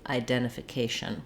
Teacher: Again, we do have that clear I, a little bit of secondary stress on that second syllable